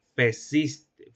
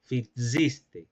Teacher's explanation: vacilación de vocal átona en la primera sílaba